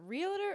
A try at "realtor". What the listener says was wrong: So, well, first off, just because all my real estate professionals, just so you know, it's realtor. There's not. It's not 3 syllables. It's 2. Realtor.